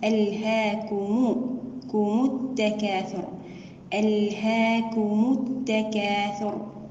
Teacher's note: يجب الانتباه على الضم في الميم وعدم اختلاسها